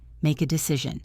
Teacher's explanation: Do not pause between make and a.